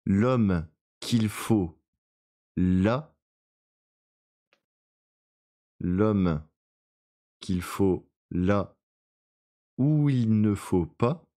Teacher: elle a pas mal d'allitérations fricatives, c'est-à-dire des sons F qui reviennent souvent